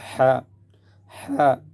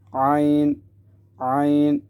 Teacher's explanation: اذ، اذ، اذ، عین، حرف عین جو ہے یہ حلق کے درمیان سے، گلے کے درمیان سے نکل، جس طرح ہا، ہا، ایک ہوا کی سی آواز آ رہی ہے ہا میں بھی اور عین میں بھی